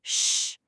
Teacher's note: When you see an s and an h team up, you don't say s sh, you just make one smooth, unified sound, sh. Two letters went in, but only one sound comes out.